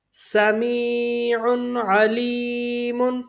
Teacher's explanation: عین کس میں سے؟ حروف ہلکی میں سے، تو یہاں پر غنہ نہیں کریں گے